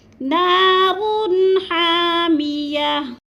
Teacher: 2 پیش تنوین کو وقف کی صورت میں جزم میں بدل کر پڑھیں گے